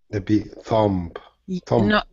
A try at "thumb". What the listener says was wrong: Yes, the B is silent. We don't pronounce it.